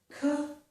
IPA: k